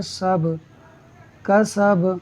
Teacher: با حروف قلقلہ میں سے ہے، ساکن ہے تو خوب قلقلہ ہوگا، یعنی آواز خوب لوٹ کر نکلے گی